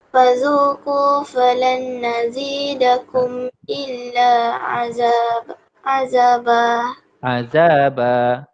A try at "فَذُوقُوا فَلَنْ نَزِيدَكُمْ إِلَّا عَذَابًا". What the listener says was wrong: Okey, yang ni kena dengung falan nazidakum. Okey, ini idgham ma'al ghunnah.